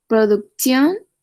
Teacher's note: Recuerda la T antes de más de una vocal. Suena como una TS, producción.